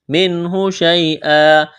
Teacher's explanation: اظہار کریں گے، نون ساکن کے بعد ہا ہے